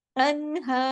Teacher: اور ہا کی آواز سینے کی طرف جاتی ہے